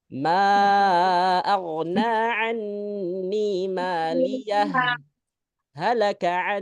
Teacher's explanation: izhar di sini adalah menjelaskan ha dan berhenti enggak bernafas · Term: saktah